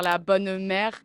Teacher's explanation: Accentuer les « e » en fin de mot.